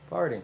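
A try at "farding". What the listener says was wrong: Do you know what farting is? No. F-A-R-D. Not F-A-R-T. F-A-R-D.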